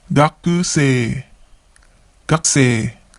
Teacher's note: Notice how we don't pronounce the U in the ku syllable. It becomes gakusei.